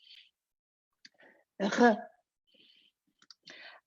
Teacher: the French r, your mouth is wider and it's coming from the back.